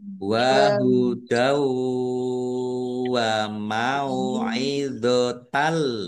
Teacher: fathah tanwin bertemu dengan huruf lam bacaan idgham bila gunnah masuk dengan tidak mendengung. Nah, lamnya dibaca double ya. · fathah tanwin bertemu dengan huruf wawu idgham bi gunnah masuk dengan mendengung yaitu mendengung wawu. Ditahan biar tampak dengungannya.